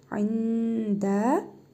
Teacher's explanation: nun hərfini burnumuzda tələffüz edərək bir əlif miqdarı uzadırıq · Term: İhva qaydasına